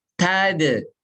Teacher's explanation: Qalqalah huruf dal tipis, jangan tadu. Tapi tad'un di luar. Pantulannya di luar.